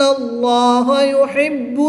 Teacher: لام سے پہلے حرف پر زبر ہے تو اس لام کو پر یعنی موٹا پڑھیں گے۔